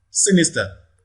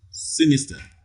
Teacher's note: the first syllable receives the primary stress